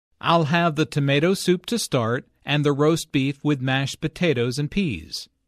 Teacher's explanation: Notice that tomato soup, roast beef, mashed potatoes, and peas are stressed because the food order is the important information here.